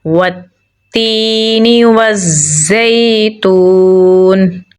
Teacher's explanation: واو کو زا کے ساتھ ملائیں گے کیونکہ زا کے اوپر تشدید ہے اور زا کو ہم سختی سے پڑھیں گے۔ زا کو اگین یا کے ساتھ ملائیں گے کیونکہ یا کے اوپر جزم ہے، اور ایک الف کے برابر لمبا پڑھیں گے کیونکہ یا حروف مدہ میں سے ہے۔